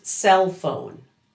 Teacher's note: That ending L in cell smoothly combines with the F in phone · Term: linking